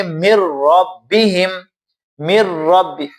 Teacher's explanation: دو را آپس میں ملے ہوئے ہیں لیکن بغیر غننے کے، آواز ناک میں نہیں جاتی